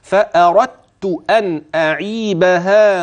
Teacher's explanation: يعني من الراء الى التاء مباشره سمعت مني دال لا الدال ادغمت